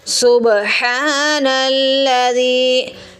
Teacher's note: हा की आवाज़ हलक से निकालेंगे, हा को खींच के अदा करेंगे, हा के ऊपर खड़ी ज़बर है।